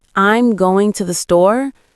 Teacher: native speakers typically stress going and store while quickly saying I'm to the. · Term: stress patterns